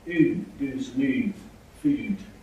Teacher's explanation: Strong goose fronting. Now this is the oo vowel, which is very much oo, goose, move, food, things like that.